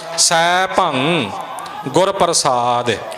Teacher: ਸੈਭੰਗ ਗੱਗਾ ਨਹੀਂ ਪਿੱਛੇ ਬੋਲਣਾ